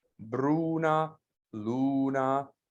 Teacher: a piano ending which is stress and then unstressed